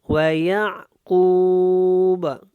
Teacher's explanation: وَيَعْقُوبَ، یہاں پہ میں نے کو لمبا کیا کیونکہ یہاں پہ ہم نے وقف کرنا ہے، وقف مطلق ہے، اور با کو ہم نے قلقلہ کے ساتھ ادا کرنا ہے